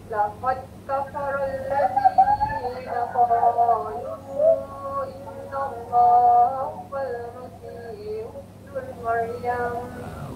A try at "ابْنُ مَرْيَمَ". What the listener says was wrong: Ibnu Maryam. Saya dengar macam hubnul. Dia tak nak nul. Hubnu saja.